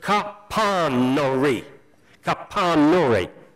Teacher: put the emphasis on the 3rd syllable from the end of the word. So it's Capanori.